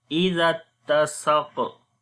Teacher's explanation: Zal we read in soft sound, and on the qaf again heavy sound and qalqala.